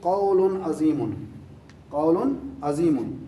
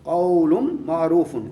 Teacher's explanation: اب دوسرا قول، میم کا ٹچ آ رہا ہے، میم پہ تشدید کھڑی ہے نا آگے، قول معروف، ایک بھلی بات. دیکھیے پہلے مرکب میں قول کی لام کو عظیم کے عین کے ساتھ مدغم نہیں کیا گیا، یعنی اسے ملا کر نہیں پڑھا گیا